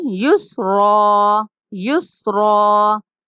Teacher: اس را کے بعد الف ہے تو جب ہم اس کو ساکن کرتے ہیں تو ایک زبر گر جاتی ہے، تو پیچھے ایک زبر اور الف رہ جاتا ہے، تو اس وجہ سے ہم نے پھر را کو لمبا کرنا ہوتا ہے